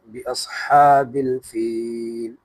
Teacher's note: بِأَصْحَابِ الْفِيلِ، اب یہاں پر یہ سواد موٹا ہوگا، بِأَصْحَابِ الْفِيلِ، اور ہا گلے کے درمیان سے ادا کریں گے، کیونکہ اس پر کھڑا زبر ہے تو تھوڑا کھینچیں گے الف کی بقدر